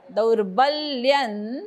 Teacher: द वरती आघात ब वरती आघात